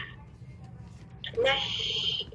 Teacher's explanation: تو اب شین ساکن مخرج فوراً سوچ لیں کیا ہے. مخرج عام اللسان, مخرج خاصہ وسط اللسان بالمقابل حنک الاعلی